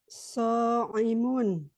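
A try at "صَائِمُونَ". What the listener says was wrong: So'imun pakai hamzah.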